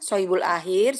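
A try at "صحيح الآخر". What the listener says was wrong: Sohihul akhir, sohihul ya, bukan sohibul, tapi sohih. Sohihul akhir, kemudian af'alul khamsah dan mu'tal akhir.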